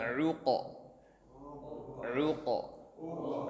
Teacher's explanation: Ain itu dari tengah tenggorokan keluarnya. Uqa ya. Sempit makhrajnya.